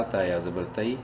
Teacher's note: یا لین ہے، تا کو شارٹلی پڑھیں گے